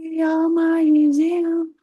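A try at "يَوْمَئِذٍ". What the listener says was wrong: Yauma idzin. Jangan kecepatan, Bu. Idzin. Zin. Zin. Pakai ini yang lidah ketemu gigi sari atas. Zin. Zin.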